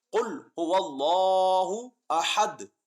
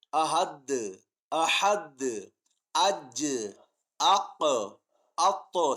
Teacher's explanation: دال حروف قلقلہ میں سے ہیں اس لیے لوٹتی ہوئی آواز محسوس ہوتی ہے